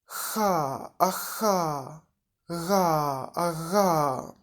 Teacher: Spółgłoski velarne, miękko podniebienne, velar, na styku języka i tylnej części podniebienia, czyli podniebienia miękkiego.